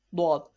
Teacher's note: Dwad is pronounced from the sides of tongue. Dwad is pronounced from the side of tongues touching the root of upper morals.